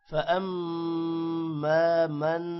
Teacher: میم پر غنہ ہے اور یہاں پر من کے نون پر بھی غنہ ہے